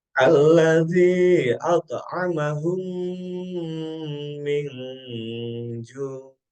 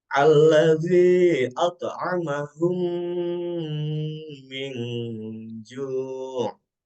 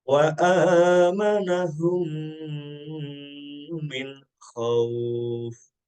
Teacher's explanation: Cara membacanya adalah memasukkan huruf mim ke dalam huruf mim disertai dengan suara gunnah. Gunnah ini artinya adalah dengung, ya, yaitu sekitar 2 ketukan atau harokat. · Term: idgham misli